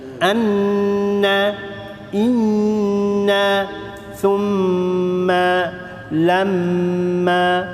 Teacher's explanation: kalau sabdu di atas mim dengan Nun ni pasti kena wajib dengung berapa harakat qadarnya dua harakat · Itu qadar dengung dua harakat, mim sabdu dan nun sabdu.